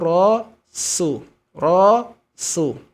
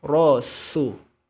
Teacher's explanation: huruf Sin di sini harus tetap terjaga bunyi Sin bunyi tipis